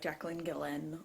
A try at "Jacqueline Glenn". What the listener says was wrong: It seems like she put an extra syllable in Jacqueline Glenn somewhere. Jacqueline Glenn. Jacqueline. Jacqueline.